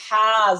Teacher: একদম গলার মাঝখান থেকে হা